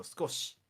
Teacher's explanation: you can actually cut the I out for skoshi, and it's just skosh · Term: high vowel voicing